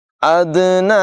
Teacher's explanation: دال میں قلقلہ ہے، خوب ظاہر کر کے پڑھیں گے.